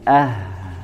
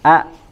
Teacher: kalau Hamzah maka tidak mengeluarkan atau tidak mengalir suaranya tertahan